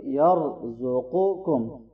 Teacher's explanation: پہلے قاف ہے اور پھر کاف ہے تو دونوں میں فرق ہونا چاہیے، ٹھیک ہے، ایک موٹا ہے اور ایک باریک ہے